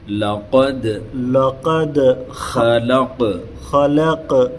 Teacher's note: یہ دال قلقلہ ہوگا حروف قلقلہ میں سے، اور قاف بھی